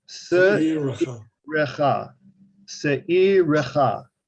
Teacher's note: It is a long vowel, and that makes the schwa underneath the resh a sounded schwa.